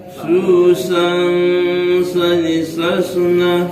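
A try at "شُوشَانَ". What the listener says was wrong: Bukan susang Pak. Syushan. Syushan. Shani. Shan. Syushan. Masihkah susang Pak? Jadi ketika mendengungkannya tu Pak, ketika mendengungkan, ketika mengikhfakan kan, jadi lidah aku tetap menjurus kepada shin. Jadi Syushan. Shanisha.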